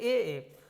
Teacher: अब कंठ तालव्य की बात करी जाए तो ए। देखिए कंठ तालव्य कंठ और तालु दोनों से बोले जाते हैं